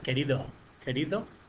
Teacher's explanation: querido por queridos la s Se la comen